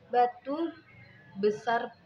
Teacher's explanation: bibir bawah dan atas rapat. Udara dari paru-paru tertahan sebelum kerapatan dilepaskan